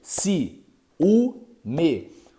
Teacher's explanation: o i tá numa sílaba o u tá numa outra sílaba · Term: iato